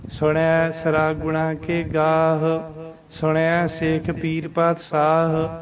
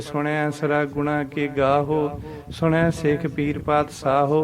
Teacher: ਹਾਹਾ ਕੱਲਾ ਮੁਕਤਾ ਹਾਹਾ ਸਾਊਂਡ ਕਰਨਾ ਹੈ। ਬਾਹਲੀ ਲੰਮੀ ਨਹੀਂ, ਸ਼ਾਰਟ ਸਾਊਂਡ ਦੇਣੀ ਹੈ ਇਸ ਦੀ